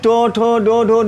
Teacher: इनका उच्चारण स्थान मूर्धा है और इन्हें मूर्धन्य वर्ण कहते हैं।